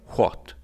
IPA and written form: xwat (what)